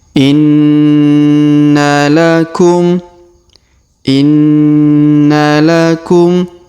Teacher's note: huruf na kita tahan dan kita tekan dan Kita dengungkan du sampai t harakat ya karena hurufnya terdapat tanda tasdid